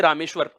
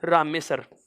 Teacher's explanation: इन दो वर्णों के स्थान पर मैंने केवल एक दंत्य वाला से ले लिया।